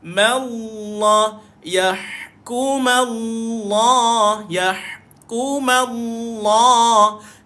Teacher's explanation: Jangan tuan-tuan sesekali membacakan ma itu dengan tebal. Ma itu nipis.